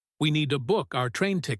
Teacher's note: In fast English, need to becomes need a.